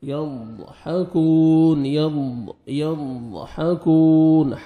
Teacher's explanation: دھیان سے آپ نے لیفٹ سائڈ سے آپ نے ساتھ والی داڑوں پہ آپ نے لگانا ہے، اور زبان کی سائڈ سے آپ نے ضاد کو ادا کرنا ہے